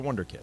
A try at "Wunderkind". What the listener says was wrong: It's not kid, though. It's kind. Because kind is the German part.